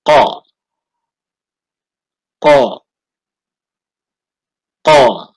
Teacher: Huruf qa keluar dari pangkal lidah menempel pada bagian daging yang lunak dari langit-langit. Atau huruf qa tempat keluarnya dari pangkal lidah dan langit-langit mulut bagian belakang.